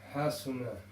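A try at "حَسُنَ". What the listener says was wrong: Again, it's got to be quick.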